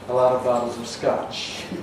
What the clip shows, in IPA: ə ˈlɑt əv ˈbɑtlz əv ˈskɑʧ